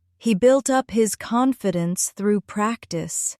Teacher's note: Stress falls on built and confidence.